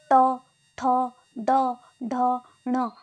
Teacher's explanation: इनको बोलते समय हमारी जीभ वहाँ पे टच होती है, हमारे निचले वाले जो दांत होते हैं उनके जो पीछे का भाग होता है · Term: मूर्धन्य